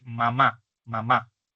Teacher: el bilabial nasal M, que es el que usamos para decir mamá